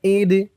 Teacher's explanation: অক্ফ করার কারণে দালের উপরে জবরটা সাকিন হয়ে যাবে।